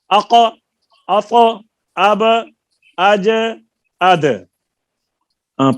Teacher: آواز رک کر پلٹ جائے · مخرج میں حرکت یعنی جنبش سی پیدا ہو جاتی ہے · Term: قلقلہ